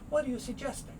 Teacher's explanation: Now you might hear suggest, but very often this is quickly suggesting. So one of the G sounds goes away.